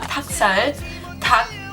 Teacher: it has an L in it, but it's not really being pronounced.